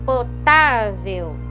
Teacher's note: Porque o EI aqui passa a ser EU, né? Porque o L aqui, embora seja L, ele tem som de U, né? Então ele é um ditongo também.